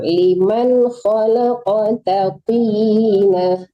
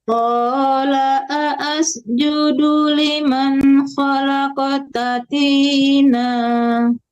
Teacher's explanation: Jangan tertahan di liman, tidak ada dengung. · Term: izhar